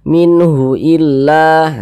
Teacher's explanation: cara membacanya itu dibaca jelas tidak berdengung min minnya itu kita baca jelas Min Nah kita baca jelas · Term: izhar halqi